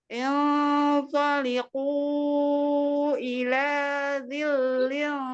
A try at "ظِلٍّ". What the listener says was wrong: Masih ketipisan. Ila dhillin.